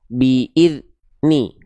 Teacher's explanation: Karena suara dalnya tertahan. Terputus. Biidni itu tidak sempurna dalnya.